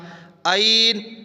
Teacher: اور گلے سے نکالنا ہے، حلق سے نکالنا ہے، گلے پہ اوپر زور دیں گے نا تو یہ نکلے گا عین۔